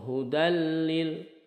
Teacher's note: Ini dihukumi idgham bila gunnah. Masuk ke huruf berikutnya tidak disertai dengung. Langsung hudalil, tidak seperti ini hudalil, tetapi hudalil muttaqin, lil muttaqin, lil.